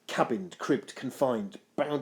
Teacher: I love the use of those harsh consonants here, the k and the b sounds, known as plosives, because they really help to capture that sense of frustration that Macbeth feels over Fleance's escape, and a sense of his own entrapment.